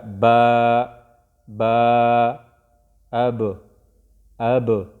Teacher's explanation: اوس دې باندې موږ حمزه الف ولګو نو څنګه به وو او او او دغه شان با دا د شونډو د نننۍ حصې نه ادا کیږي چې کومه لمدی چې دواړه شونډې یو بل سره یو ځای شي نو د دې نه با ادا کیږي لکه با با اب اب.